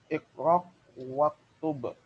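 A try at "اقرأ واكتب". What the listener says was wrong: Dengan hamzah, bukan dengan qaf. Iqra.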